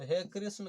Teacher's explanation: ये री जो है, ये 3 मात्रा का समय लेते हुए ये जो री ह्रस्व स्वर है, यह प्लुत स्वर बन जाता है।